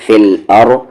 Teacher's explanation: را کی آواز ہیوی ہوگی یہاں پر کیونکہ اس کی آواز اوپر جا رہی ہے